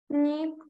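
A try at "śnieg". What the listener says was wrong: Тільки не сніг. Ні-ні-ні-ні. А буде ще, бо там у нас «с» кресочкою. Бачимо, така на горі кресочка. То це вже не буде як «с», це буде як «щ». «Щ».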